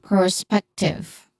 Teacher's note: The second syllable is the stressed syllable here, which is on peck.